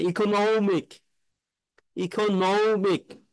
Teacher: নমিক এখানে আপনার স্ট্রেস হবে